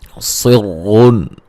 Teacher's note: یہاں صاد کو موٹا ادا کریں گے، را کو بھی موٹا ادا کریں گے اور یہاں نون تنوین کا اظہار ہوگا، گنہ نہیں کریں گے.